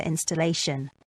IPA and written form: ˌɪn.stəˈleɪ.ʃən (installation)